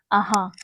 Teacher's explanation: इसमें वायु भी ज्यादा निकल रही है। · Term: महाप्राण